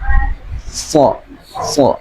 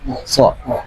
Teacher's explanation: pengucapan huruf sha itu agak lebih nempel langit-langit atas